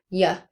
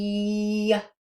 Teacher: When we make that a little bit longer Y it can become like an E sound. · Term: Y sound